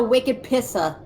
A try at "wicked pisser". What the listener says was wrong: Except you put too much emphasis on the ER at the end of pissa. It's pissa.